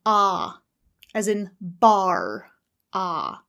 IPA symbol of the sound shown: ɑː